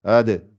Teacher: Donc c'est ça le qalqala, le fait que ça rebondisse.